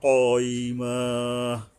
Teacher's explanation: বড় কফ হলকের গোড়ার থেকে মোটা করে শক্তভাবে আদায় করতে হবে।